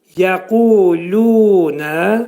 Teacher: Yə incə samitdir. Qaf qalın hərfdir. Bu hərfin məxrəci demək dilin sonu və dilçəyin başlanğıcındadır.